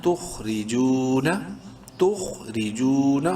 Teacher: تخری، جیم واو پیش جو، واو مدہ ہے. جیم کو ایک الف کے برابر لمبا کرنا ہے. نون زبرنا، تخرجون، تخرجون، خو کو خوب منہ بھر کے پڑھنا ہے.